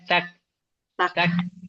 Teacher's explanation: untuk yang kaf bacanya tak tak tak ada anginnya